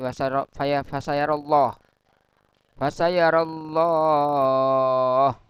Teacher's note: lam jalalah tafkhim, ya, dibaca tebal. Karena lafaz Allah didahului dengan harokat fathah atau dhamma.